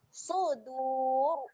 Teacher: ra ni menjadi ra yang tebal. Okey. Jadi kita kena muncungkan mulut. Sudur. Boleh?